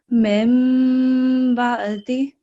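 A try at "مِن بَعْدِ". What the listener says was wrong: Okay, it's not ba. Mim ba'di. So if you can just make a note of the letter ain that you need to practice this later on.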